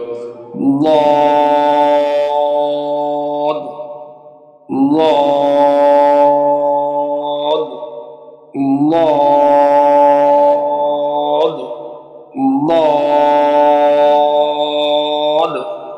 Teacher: এভাবে একটি হরফ কমসে কম 20 বার মাস করতে হবে। জিহ্বার গোড়ার কিনারা উপরে মাড়ির দাঁতের গোড়ার সঙ্গে লাগিয়ে 4 আলিফ টেনে পড়তে হবে।